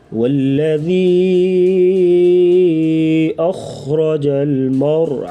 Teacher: را ساکن اس سے پہلے زبر تو را کو بھی پر پڑھیں گے موٹا